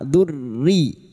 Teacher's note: Him durriyatahum. Masuk pada huruf ro yang bertasdid. Hanya masuk tanpa ditahan lama-lama.